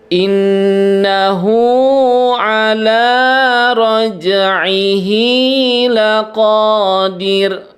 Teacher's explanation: Jadi ketika ada ro sukun atau ro yang disukunkan dan huruf sebelumnya itu kasroh, maka si ro-nya itu dibaca tipis atau tarkik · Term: ro tarkik